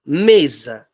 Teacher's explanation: a sílaba tônica da palavra mesa é o me, o M e o E